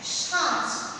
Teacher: শব্দের শুরুতে বা মধ্যে শাসাঘাত করার ফলে শব্দের শেষের যে স্বরধ্বনি সেটা লুপ্ত হয়ে যাচ্ছে। সন্ধ্যা থেকে সাঁঝ, শব্দের শেষের যে স্বরধ্বনিটা সেটা লুপ্ত হয়ে যাচ্ছে, একেই বলা হবে অন্তঃস্বরলোপ।